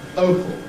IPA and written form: ˈəʊpl (opal)